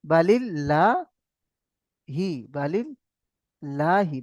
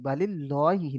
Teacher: আল্লাহ লাম মুশাদ্দাদের পূর্বে জের এসছে, তাই আল্লাহ লামকে বারিক অর্থাৎ লা করে পড়তে হবে।